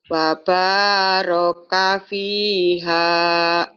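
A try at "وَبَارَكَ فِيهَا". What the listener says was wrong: bukan fa tapi wa.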